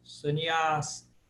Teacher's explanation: Esse segundo A aí de trás para frente é longo.